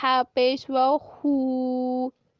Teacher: और जब हा के ऊपर पेश आ जाएगी तो होंठ गोल हो जाएंगे। और किसकी आवाज आएगी, ऊ की।